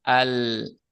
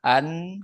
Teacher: Kalau lam tepi lidah, kalau nun ujung lidah, begitu.